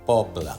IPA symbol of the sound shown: ə